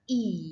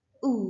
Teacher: Ketika kita mengucapkan kata I, the tongue itu forward. Sedangkan ketika kita mengucapkan U, itu our tongue backward. Ya, dia ke belakang. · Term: backwardness